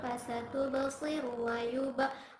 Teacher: Fasatuba qalqala sugra karena terdapat huruf qalqalah yaitu ba dan berada di tengah kalimat. Cara bacanya dipantulkan dengan pantulan yang kecil.